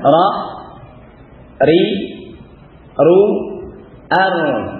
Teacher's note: Ra berdekatan dengan makhrajnya nun ya. Masukkan sedikit ke zahirul lisan.